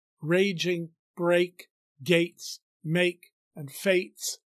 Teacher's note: make and fates are all assonant words repeating the long a sound